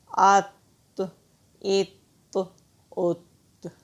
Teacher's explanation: طا حروف کلکلہ میں سے ہے اور موٹے حروف میں سے ہے، اس کو ہم موٹا بھی پڑھیں گے اور کلکلہ بھی کریں گے۔ حمزہ زبر طاعت، حمزہ زیر طاعت، حمزہ پیش طاعت، ات ات ات۔